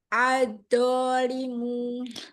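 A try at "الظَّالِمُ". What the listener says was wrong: Gesekan ujung lidah keluarkan. Pangkal lidah angkat lagi biar tebal. Ad-zolimu.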